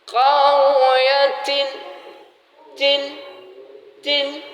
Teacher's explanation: Kalau yang namanya huruf ta ini harus ada angin, keluarnya angin.